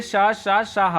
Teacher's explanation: आप बोल के देखिए शा शा शाह को, तो ऐसा लगेगा कि सीटी का साउंड आ रहा है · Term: ऊष्म व्यंजन